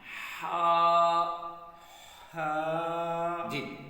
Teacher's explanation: تو ہم نے جو ہا ادا کرنی ہے یہ حلق کے درمیان سے ہونی چاہیے. سانس نکلے گی، ٹھنڈی سی سانس.